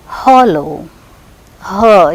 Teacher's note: the air from the lungs escapes through the narrow glottis with audible friction. Thus, it is a voiceless glottal fricative.